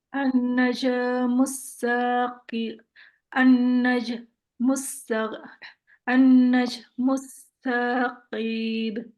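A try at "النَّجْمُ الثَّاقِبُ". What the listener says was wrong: T-nya jangan panjang. Saqib.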